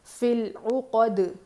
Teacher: جزم دے کر سانس توڑ دیں گے اور دال پہ قلقلہ کریں گے کیونکہ دال حروف قلقلہ میں سے ہے.